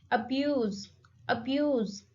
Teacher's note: The stress is on second syllable